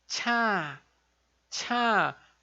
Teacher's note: em vez de ser um som só de TSH mais forte ele é um som aspirado